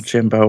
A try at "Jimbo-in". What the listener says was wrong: Jimbo- it's Jimbo in. It's pronounced Jimbo-in, not Jimbo Y.